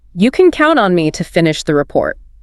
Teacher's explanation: The pitch drops on report, >> right? That falling tone signals closure and confidence.